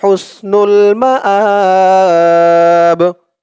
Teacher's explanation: মাব এখানে করার কারণে তিন আলিফ টান হবে প্রথমত আলিফ টান ছিল কিন্তু এই এক আলিফ টানটা তিন আলিফ টান হয়ে গেছে